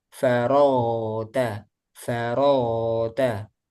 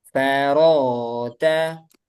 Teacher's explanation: faro ini rokhawah. Jadi bunyinya suaranya masih ada.